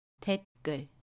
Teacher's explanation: 받침 디귿과 첫소리 자음 기억이 만나면 댓글이라고 발음해요. 첫소리 기억을 쌍기역으로 발음합니다. 된소리 대기 현상이에요.